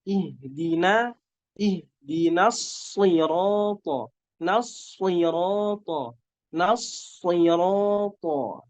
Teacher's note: Nunnya tipis, jangan sampai terpengaruh ketebalan yang ada pada huruf shad.